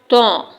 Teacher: زبان کی جڑ اوپر کے دو دانتوں سے لگ رہی ہے تو طو ادا ہو رہا ہے